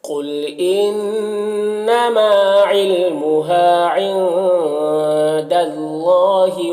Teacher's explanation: نون میں یہاں پر اخفا ہوگا